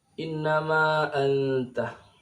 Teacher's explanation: Nun yang bertasydid ini tempat keluarnya di khayshum, berbeda dengan nun yang tidak bertasydid. Jadi nun yang gunna, yang dengung itu berada di pangkal hidung, berbeda dengan nun yang tidak dengung, tempat keluarnya beda. · Innama a ini mad jaiz munfasil, dibaca seukuran 2,5 alif atau 2 alif panjangnya